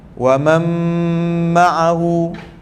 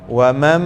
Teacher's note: Nun ni kita dah tak bunyikan sebab dia dah masuk ke huruf mim. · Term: idgham bi gunnah